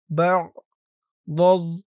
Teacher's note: আইনের উচ্চারণটা গলার ভেতর থেকে শক্ত হয়ে বের হবে